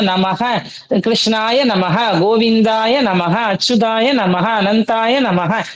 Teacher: இந்த விசர்கத்துக்கே ஹா சவுண்ட் தான் மெயின் சரியா ஹா தான் அதுக்கு மெயின் நம க சொல்லாதீங்க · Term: விசர்கம்